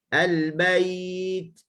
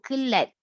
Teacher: Tekan ta baru keluar anginnya. Dia syiddah dulu.